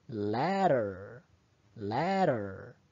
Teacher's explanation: in American English the phoneme D is sometimes realized as the alveolar tap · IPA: [ɾ]